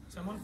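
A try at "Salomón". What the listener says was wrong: You said fish. No, Salomon is a fish. But if you don't add that extra O, you're saying fish. The same word in Spanish.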